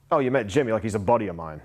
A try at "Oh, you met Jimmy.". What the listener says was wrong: so slow that down. Probably, pause.